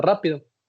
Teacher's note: las esdrújulas, donde la sílaba tónica es la antepenúltima y siempre llevan tilde, como en la palabra rápido.